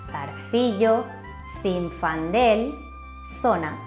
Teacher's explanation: La Z tiene el mismo sonido que la C suave interdental cuando va seguida de las vocales E o I.